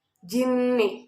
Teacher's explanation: jinni termasuk nun bertasydid, maka bacanya itu harus dengung. Lama dengungnya itu 2 harokat atau 1 alif.